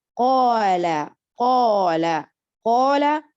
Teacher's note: Quand on dit qala, qala, qala, on n'a pas le vibration parce qu'on ne dit pas qala, on dit qa, qa. Mais en appuyant qala, on voit que l'emphatique, le gonflement de la langue, il y est.